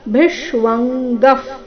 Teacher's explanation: ಮುಂದಿನ ವಿಸರ್ಗದ ಉಚ್ಚಾರಣೆ ಅರ್ಧ ಫ ರೀತಿ